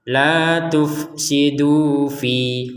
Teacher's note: Kalau kita berhenti misalkan la tufsidu fi, maka panjang dua harakat.